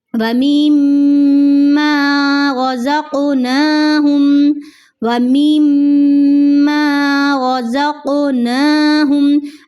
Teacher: جب میم کو میم کے ساتھ ملایا ہے یہاں پہ ہم نے غنہ کیا ہے